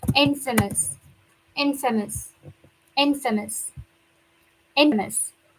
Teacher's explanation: We have the word famous, but this one we stress the first syllable.